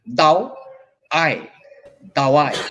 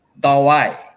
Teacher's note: হ্যাঁ, মনে রাখতে হবে যে এখানে ঠোঁটের কি কারবারটা চলে। দাওয়ায়, ঠোঁট গোল হয়ে আবার স্ফীত হয়ে গেল